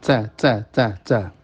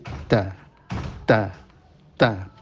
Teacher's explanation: makhrajnya ta pojok lidah mengenai akar gigi atas jadi ke atas ya bukan di pucuk gigi di atas